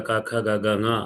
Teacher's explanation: కు అంటే కవర్గ, హ అంటే హకారం. వాటితో పాటు విసర్జనీయులు కూడా. వీటన్నింటికీ స్థానం కంఠం.